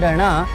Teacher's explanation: इनका उच्चारण जीभ के मूर्धा से लगने पर ही हो सकता है। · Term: मूर्धन्य